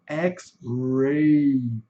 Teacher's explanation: o R é bastante puxado, né? O R do caipira, né? É o R do americano fazendo turismo no Brasil, né?